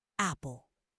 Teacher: Really open for that A sound.